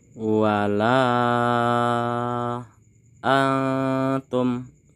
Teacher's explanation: Pada kata wala ini dipanjangkan 5 harokat. Antum ini kita samarkan bunyinya, ini merupakan hukum ikhfa.